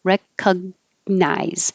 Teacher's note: Your tongue goes to the G position. It's high in the back and touches, but you don't release it as G. You can hold it there.